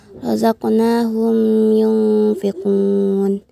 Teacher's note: mim sukun bertemu dengan huruf ya yang dihukumkan sebagai izhar syafawi dan dibaca dengan jelas